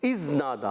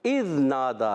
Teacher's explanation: زال کا مخرج زبان کا سرا اوپر کے دانتوں کے کنارے سے · حمزہ کو زال سے ملانا ہے زال کو ہلانا نہیں زال کو زا نہیں بنا دینا